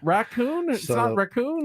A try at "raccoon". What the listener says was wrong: Putting the wrong emphasis